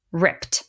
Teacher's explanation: when we get to this double p we simply make one p sound